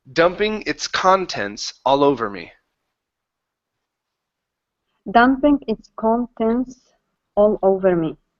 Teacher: you don't want to place the second vowel in between the n and the T or the T and the s